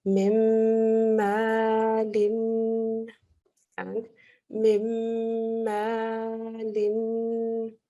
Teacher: the noon merges into the meme and it becomes a meme nasal sound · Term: full nasal sound